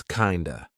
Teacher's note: we're turning that of into a schwa. So it's not kind of, it's kinda.